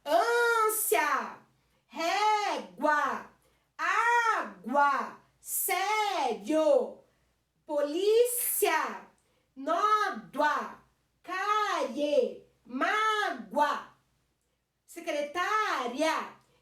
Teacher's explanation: Esse finalzinho ya, yo, oa. São um finalzinho que você tem um som de vogal e semivogal junto. · não é a última sílaba que é mais forte, é a penúltima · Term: ditongo